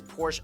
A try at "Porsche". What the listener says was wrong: Not Porsche, Porsche, not Porsche. Pronounce the E, please. Pronounce the E.